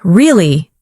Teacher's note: when you ask a question like, Really? your voice goes up slightly at the end. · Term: rising tone